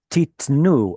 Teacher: Earlier we saw titenu, and that was a pausal form, so the stress went here, and the shva was preserved as a full tzere. But titnu is the normal form, where the stress moves to the end of the word, and the tzere drops to a shva.